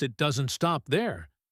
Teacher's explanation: The stress is on stop. The doesn't is said very quickly.